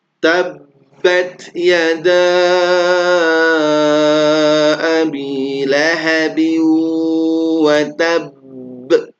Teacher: Watab ditahan baru dipantulkan ya karena ada tasdid. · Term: tasydid